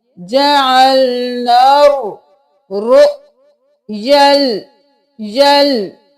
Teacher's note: نون کو اس رو کے ساتھ ملائیں گے